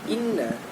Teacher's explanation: karena ada huruf nun ditasydid, cara membacanya harus didengungkan, kurang lebih 2-3 harokat begitu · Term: wajibul guna